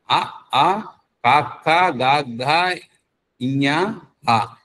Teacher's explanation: అంటే కంఠంలో నుంచి పుట్టేటివి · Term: కంటవ్యాలు